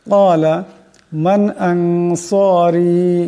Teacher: রা নিচে জের আছে এবং মদ আছে, এই রাকে লম্বা করিয়া পড়তে হবে